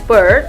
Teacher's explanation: The tongue position is in the middle of the mouth, which means that the tongue is neither too forward or too backward in the mouth. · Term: central vowel